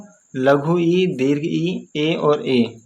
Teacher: इनका उच्चारण जो होता है जीभ के अगले भाग से होता है तो इसीलिए इनको अग्र स्वर कहा जाता है ये अग्र स्वर